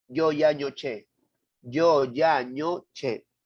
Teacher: entre la punta de la lengua y el medio del paladar